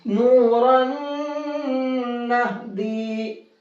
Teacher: اس تنوین کو نون میں کر دیں گے مکس، نون کی آواز ہو جائے گی ختم اور اس تنوین کی جگہ نون میں غنہ کر کے پڑھیں گے.